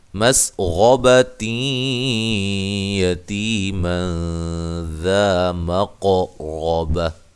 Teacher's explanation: یہاں نون تنوین کا اخفا مع الغنہ ہے